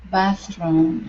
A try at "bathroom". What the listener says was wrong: So here you're saying bathroom. Okay, using a hard R. Okay, force your tongue down so your tongue does not hit the top of your mouth. Bathroom. Bathroom.